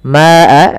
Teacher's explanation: di sini ma-nya kita panjangkan sepanjang 4 harakat atau 5 harakat, karena di sini kita namakan dengan mad wajib muttasil, yaitu mad yang terjadi teman-teman apabila ada mad tabi'i datang setelahnya huruf hamzah.